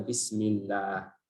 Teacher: karena sebelumnya berharakat kasrah jadi dibacakan tipis